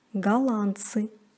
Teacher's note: НДЦ произносится как НЦ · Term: непроизносимый согласный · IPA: [galantsy]